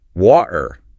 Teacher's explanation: the modern estuary English that you hear around London. Where the letter T goes to die. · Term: glottal stop